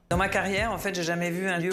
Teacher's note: she drops the ne in je n'ai jamais vu